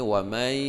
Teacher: Ya, dibacanya ini wa may idgham bi gunnah, nun mati bertemu dengan ya, berdengung 2 harakat